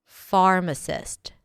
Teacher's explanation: Pharmacist. The stress is on the first syllable.